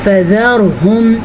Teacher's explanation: را ساکن اور اس سے پہلے زبر ہے تو را کو پر پڑھیں گے، اگر را ساکن ہو اور اس سے پہلے حرف نیچے زیر ہو تو را پر باریک پڑھی جائے گی، اگر را ساکن ہو اور اس سے پہلے حرف کے اوپر زبر یا پیش ہو تو را پر پڑھی جائے گی۔